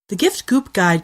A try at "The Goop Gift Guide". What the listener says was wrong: Yeah, you said gift goop guy. Gift goop guide. Gift goop guide.